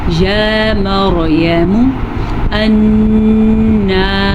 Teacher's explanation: یا مریم را کو پر پڑھنا ہے. را ساکن سے پیچھے والے حرف پہ زبر ہے تو ہم را کو پر پڑھیں گے